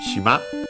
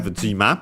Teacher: the phonetic change from shi to ji. So the voicing of the consonant, adding the duck 10 in writing.